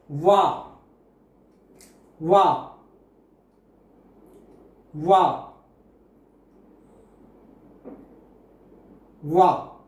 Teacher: it will be a combination of O vowel plus A vowel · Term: Korean diphthong